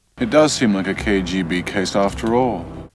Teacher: And he uses BATH-broadening.